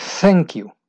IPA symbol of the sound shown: θ